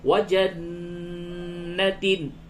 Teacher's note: نون مشدد ہے، اس جگہ پہ غنہ ہوگا